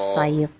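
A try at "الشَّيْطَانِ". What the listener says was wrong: Dan syaito, jangan masuk hidung ya-nya. Syai. Syaito. Iya.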